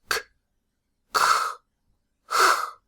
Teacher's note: you start by making a k, then you release it into a hissing-like fricative sound, k, and then you drop the k, h.